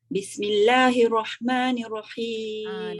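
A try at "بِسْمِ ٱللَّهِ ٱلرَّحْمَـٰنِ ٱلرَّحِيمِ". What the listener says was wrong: Dekat bismillah tu dia mesti kena ada sabdu tu. Bismillahirrahmanirrahim. Dia ada sabdu tu yang kita nak kena tekan.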